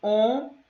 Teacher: Os dígrafos vocálicos são duas letrinhas, justamente uma vogal com a letra M ou uma vogal com a letra N, que tem sons nasalizados na pronúncia, tá? Quando eu vou pronunciar, eu nasalizo esse som, ou seja, sai mais pelo nariz.